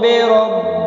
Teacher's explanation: را زبر کی وجہ سے پر پڑھا جائے گا